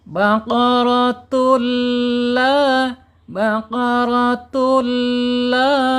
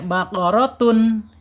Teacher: Tanwin ketemu lam ini bacaannya secara hukum idgham bila gunah. Ya, idgham bila gunah. Tanwin dilebur ke huruf lam. Enggak boleh baqaratun ya.